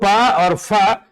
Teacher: प और फ यह युग्म अघोष ध्वनि है